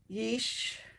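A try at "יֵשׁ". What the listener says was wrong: It's a S, yeast. Yeast. S, yeast.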